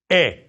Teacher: You don't close it off at the end as you often do in English.